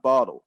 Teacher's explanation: someone from the united states they would hit more of a d sound